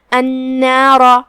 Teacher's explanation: آخری میں را کا حکم ہے تفخیم، ہم را کو بھاری آواز میں پڑھیں گے